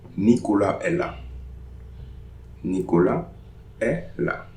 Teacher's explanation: Nicolas est là. So no liaison between Nicolas and est.